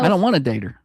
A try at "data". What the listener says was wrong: Data. I don't want, you put the ER, you said dater.